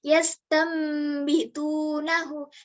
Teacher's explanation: Kalau huruf ba itu pengeluarannya pada dua bibir, sedangkan huruf nun atau tanwin pengeluarannya hanya pada ujung lidah. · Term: iklab